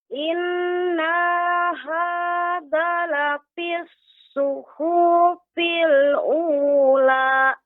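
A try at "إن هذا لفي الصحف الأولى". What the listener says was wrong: Nanya jadi panjang Ibu. Tadi sudah tepat, nanya pendek. Ini Ibu membaca, nanya dibaca panjang. Inna hadza. Yang benar, nanya dibaca pendek. Zanya baru dibaca 2 harokat. Inna hadza lafis suhufil ula.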